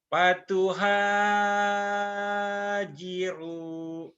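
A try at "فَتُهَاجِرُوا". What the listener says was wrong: bagus tapi hanya jangan kepanjangan. Fatuhajiru. Fatuhajiru. Jangan kepanjangan. Fatuhajiru.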